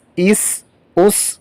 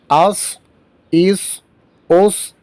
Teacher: سین میں آواز باریک ہونی چاہیے، اور صاد میں آواز موٹی کر کے پڑھیں گے، اور سیٹی کی آواز بھی ہونی چاہیے.